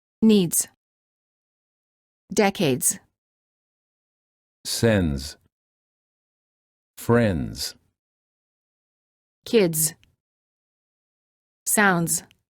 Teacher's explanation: Make sure that you pronounce both the D and the Z sound in the following words. The S is pronounced like a Z sound because it's followed by a D, which is a voiced consonant. The D will need to be pronounced softly in order to ensure a smooth transition to the Z.